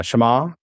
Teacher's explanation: you'd hold that ah a little bit longer